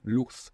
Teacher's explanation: this Z would be pronounced th in most of Spain, luz. But in the rest of Spanish-speaking world, luz means light.